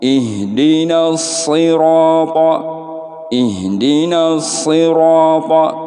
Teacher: Kemudian di sini ada ro, ada alif. Nah ini mad tabi'i, panjangnya harus 2 harokat, tidak boleh lebih